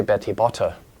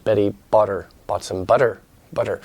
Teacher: between vowels or before an unstressed vowel it's like that as sort of a soft D like sound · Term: soft T